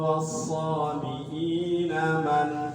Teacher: Cara bacanya jelas tanpa dengung. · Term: idhar halki